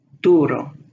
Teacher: it's not a U with a Y sound at the beginning, but an U sound.